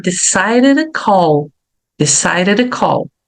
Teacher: como essa consoante aqui pode virar um som de fraquinho e a última consoante eu vou pronunciar bem suavemente · o som de di e de ti pode virar um R